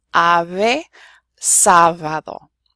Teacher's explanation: It's not our V though, it's what's called an approximant. And so it's actually basically making our V sound, but instead of using your teeth, it's using just your two lips.